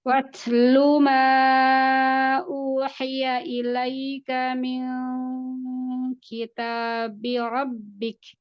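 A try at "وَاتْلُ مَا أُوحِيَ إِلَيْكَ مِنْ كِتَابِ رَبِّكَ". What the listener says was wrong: Ya, ikhfa kaf turun. Pangkal lidah jangan naik. Naik. Ini jangan dinaikin ya. Ini datar aja. Lidah datar ke pangkal lidah ke langit-langit yang keras.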